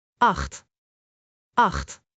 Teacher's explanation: One strong syllable from the throat.